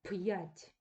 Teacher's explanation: звуків навпаки вони пом'якшують звуки перед апострофом цього робити не слід перед апострофом звук вимовляється чітко твердо і після апострофа Ми повинні почути два звуки йа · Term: знаком твердої вимови